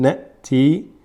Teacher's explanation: In some qira'at they say nati without a pause, but we're reading as na'ti. Just a pause without breathing.